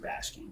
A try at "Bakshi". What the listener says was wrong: We're saying Bakshi and you're saying Bashki.